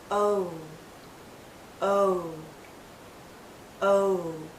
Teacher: even tighter it finishes actually with a slight oo sound oh do you see how my lips start larger and then pull in to a tighter circle · as we come to the end of this vowel sound, our lips become even tighter. It finishes actually with a slight oo sound.